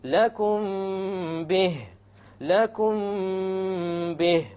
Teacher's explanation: We have a meme sakin followed by a ba. Once again, we're going to have an ikhfa, and there will be a ghunna.